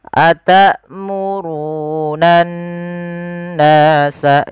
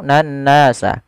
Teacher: Kemudian berfal annas di situ ada lafal bacaan ghunah yang di mana harakat nun yang dia berharakat tasydid. Cara membacanya adalah kita menahan suara nnya sepanjang dua harakat. · Cara membacanya adalah kita menahan suara n-nya sepanjang 2 harakat. Atamurunan nasa, jangan langsung nan nasa. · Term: gunnah